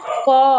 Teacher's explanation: আর কণ্ঠবর্ণ দেখো, ক, আমাদের গলার, আমাদের কণ্ঠের প্রভাবটা কিন্তু বেশি লক্ষ্য করা যাচ্ছে